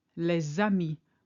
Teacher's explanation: where the S of les carries on to the A of ami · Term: liaison